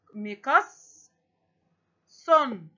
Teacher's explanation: لاحظوا معي حرف الصاد سينطق مرتين